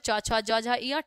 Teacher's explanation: च वर्ग का उच्चारण स्थान होता है तालु